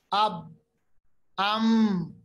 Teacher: बा पढ़ते वक्त दोनों होंठों की तरी वाला हिस्सा मिलाने से बा अदा होता है। · मीम, दोनों होंठों की खुश्की वाला हिस्सा मिलाने से मीम अदा होता है।